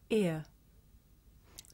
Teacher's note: this is a diff thong a double vowel sound the shape the mouth makes changes from the beginning of the sound to the end